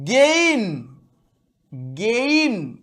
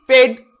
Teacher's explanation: দুটো আলাদা আলাদা ভাওয়েল সাউন্ড তৈরি করে, এদের আমরা ডিপথং বলি